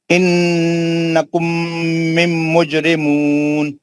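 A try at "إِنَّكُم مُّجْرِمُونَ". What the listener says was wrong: نہیں دو میم نہیں پڑھنا, میم نہیں ہے. انکم مجرمون. دو غنے کریے, دو غنے پھر پڑھیے, دو غنے کریے اچھے.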